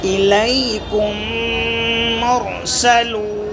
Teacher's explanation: میم ساکن کے بعد میم آئے تو میم کو میم سے ملا کر غنّے کے ساتھ پڑھا جائے گا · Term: ادغام